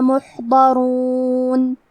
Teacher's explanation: کلمت محضرون میں حا ساکن ہے، تو ہمیں حا کو ظاہر کرنا ہے۔ حرف الضاد کی ادائیگی زبان کے کروٹ اور اوپر کی داڑھوں کی جڑ سے ہے، ضاد حروف التفخیم میں سے ہے، تو ہم یہ حرف کو بھاری آواز میں پڑھیں گے۔